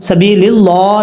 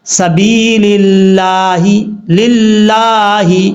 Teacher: اگر لفظ اللہ سے پہلے زیر ہو تو لفظ اللہ بریک پڑھا جاتا ہے۔ اب اس کو سبیل اللہ نہیں پڑھنا، سبیل اللہ، للہ اس طریقے سے پڑھا جائے گا۔